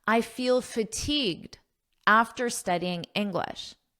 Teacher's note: this D in fatigued is extremely soft and you don't really hear it at a natural pace